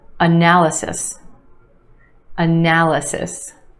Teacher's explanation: 4 syllables in this word with emphasis on the second syllable